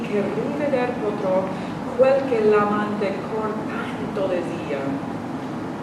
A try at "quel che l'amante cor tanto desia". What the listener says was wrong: Desia. There's no R in there. There's no R.